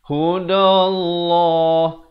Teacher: Di sini lafzul jalalah perkataan Allah kita baca tebal.